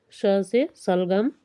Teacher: तालु से जो है इसका उच्चारण स्थान होता है, और तालु से जो है कौन सा वर्ग आता है तालु में, कांताले, तो इसमें जो है च वर्ग आता है, और उसी के साथ ही जो है श भी आता है, तो इसका उच्चारण स्थान तालु है। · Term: तालव्य ध्वनि